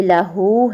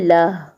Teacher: وقف کی صورت میں ہا کو ساکن کر دیں گے۔ جیسے لاہو ہے تو اس کو لہ پڑھیں گے۔ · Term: ہا کا وقف